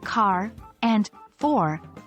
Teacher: American English has a rhotic R. This means the R at the end of words like car and for is pronounced.